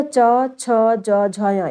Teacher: जीभ का अगला भाग कठोर तालु से स्पर्श करता है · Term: तालव्य